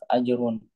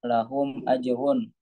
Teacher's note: Ro yang berharokat domah itu tebal tafkhim.